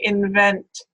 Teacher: one alveolar nasal sound N here that can be produced as a labiodental, where you will say invent.